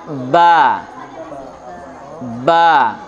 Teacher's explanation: kedua bibirnya bertemu ya nempelnya sempurnalah